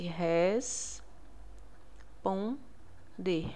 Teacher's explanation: Esse N, ele vai nasalizar a letra O. É como se fosse res pon de. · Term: vogal nasal